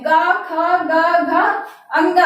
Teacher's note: और का वर्ग का उच्चारण स्थान कहाँ से होता है? तो कंठ से होता है।